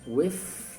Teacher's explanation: Dessa vez o TH ele tem um som voiceless, né, que a gente fala, é um som que não vibra.